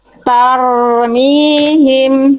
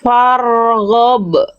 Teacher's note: huruf ro itu jangan sampai getarannya samar-samar, Teman-teman. Tapi jelas ya. Enggak boleh berlebihan memang, tapi juga enggak boleh hilang.